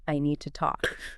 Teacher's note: the D at the end of need and the T at the start of two, they blend together. They're so tight that the tea almost becomes silent.